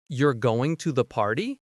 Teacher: with a rising tone at the end, you know it's a question. But if they say, "You're going to the party with a falling tone, it's a statement." Even if you miss some words, intonation gives you clues about meaning.